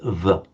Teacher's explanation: in English v if you feel it lower lip against the upper teeth